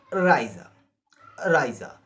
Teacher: E-I is pronounced in German as I or aya